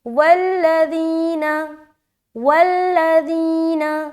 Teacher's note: ذال کی ادائیگی نرمی کے ساتھ بغیر سیٹی کے ہوتی ہے۔ اگر آپ جب ادا کرتے ہیں تو غور سے سنیں، اگر آپ کی سیٹی نما ادا ہو رہا ہے تو یہ غلط ہے، اس کو درست کریں۔